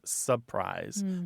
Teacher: it often comes out as surprise that first R is gone